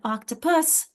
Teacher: notice I'm swallowing that and it's a very weak syllable, and it becomes more of a schwa sound